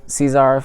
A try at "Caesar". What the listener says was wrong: I don't think that's how you pronounce it, but yes. I don't think you pronounce it with the Z that hard.